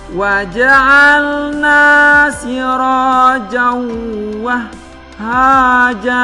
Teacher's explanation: Harus dibaca kedengaran huruf ha itu keluarnya dari rongga dada.